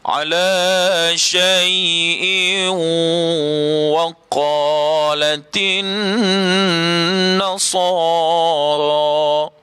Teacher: Asalnya syai'in, asalnya bunyinya syai'in, hamzah 2 di bawah in, tapi dia tak bunyi in dah, dimasukkan bunyi tanwin in itu kepada waw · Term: idgham ma'al ghunnah